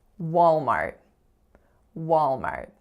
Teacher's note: syllable is Mart so that is a complex AR vowel are the strongest syllable is of course on the first